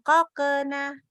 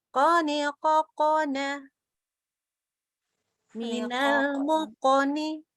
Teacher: mantulnya itu ke tafkhim, tidak ke tipis